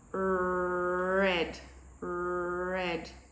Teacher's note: the sides of the tongue are actually going against the teeth